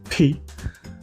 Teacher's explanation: P also has a little bit of an H sound in it